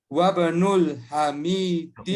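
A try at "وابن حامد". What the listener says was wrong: Wabnu, bukan wabnul, nggak ada alif lamnya.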